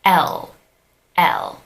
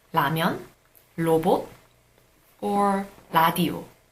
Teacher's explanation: D and T when leah is romanized as an L at the tip of your tongue touches the alveolar Ridge instead of your teeth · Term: alveolar consonant